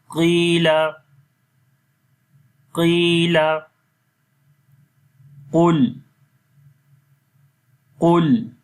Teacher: تو یہاں پر بھی دیکھیں قاف کو موٹا پڑھ رہے ہیں، حالانکہ قاف کے نیچے زیر آ رہی ہے تب بھی قاف کو موٹا پڑھیں گے